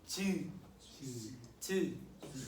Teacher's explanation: 파열과 마찰이 모두 있어서 파찰음이라 해요.